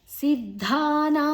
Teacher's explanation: ಸಿದ್ ಅಲ್ಲಿ ಅಲ್ಪಪ್ರಾಣದ್ದು ನಂತರ ಅಡಿತ್ತು ಧ ಮಹಾಪ್ರಾಣ